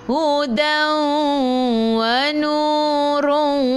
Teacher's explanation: tanwin tak sama bertemu dengan waw masuk dan dengung idgham ma'al gunnah